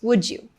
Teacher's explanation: if a word ends in D and the next word is U, it makes a j sound